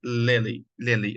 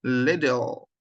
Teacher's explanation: so the last L here is dark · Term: dark L